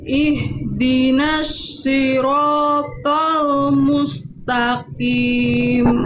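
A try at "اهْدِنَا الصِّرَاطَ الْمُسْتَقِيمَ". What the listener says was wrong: di huruf shadnya Bunda masih melafalkan Sin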